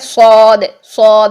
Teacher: منہ بھر کے جب ادا کریں گے تو اے ڈبلیو کی ساؤنڈ آئے گی، او یہ ساؤنڈ آئے گی. اس کے لیے آ اور اس کے لیے او.